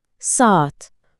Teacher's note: Əgər iki dənə eyni sait yan-yanadırsa, məsələn, saat sözündəki kimi, birini atıb digərini biraz uzadırıq. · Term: Qoşa saitlər